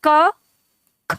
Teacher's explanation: क की तुलना में ख में ज्यादा हवा मुख से निकलती है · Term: महाप्राण